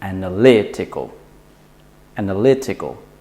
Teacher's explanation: you want to put the stress on the syllable before the last two syllables